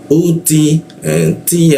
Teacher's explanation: U atau alif atau hamzah posisinya ditenggorkan bagian bawah dia U ee Ti. Nah, huruf T ujung lidah nempel ke gigi ya. Ada bocor tipis dia.